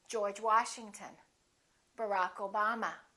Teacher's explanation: We stress the last name, the second word.